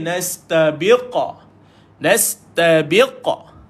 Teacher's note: Ni nama dia qalqalah besar sebab duduk di hujung. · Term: qalqalah kubra